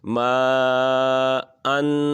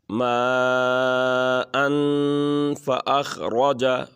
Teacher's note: حمزہ کے اوپر ان کی آواز میں جو نون ہے وہ نون کی آواز کو ہم اخفا کر کے پڑھیں گے